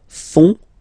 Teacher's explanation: And ils, plural, font, final T not pronounced